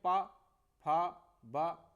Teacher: है यानी हमारे ओठ काम कर रहे हैं है ना तो ये ओठों के द्वारा इनका जो उच्चारण स्थान है वो हमारे ओठ है ओठों की वजह से इनका उच्चारण स्थान हो रहा है सेकंड